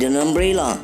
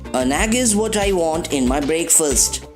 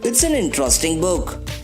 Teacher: Remember, it's pronounced as un. Notice carefully how quickly article an attaches itself to the word after it in the following examples.